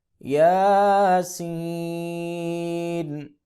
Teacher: سین کو پھر 4 یا 5 الف کے برابر لمبا کریں گے